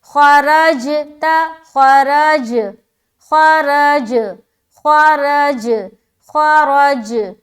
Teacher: ख्वा भी मोटा और रा भी मोटा, और मोटा रखते हुए जीम में कलकला भी, और ता को बारीक निकालनी है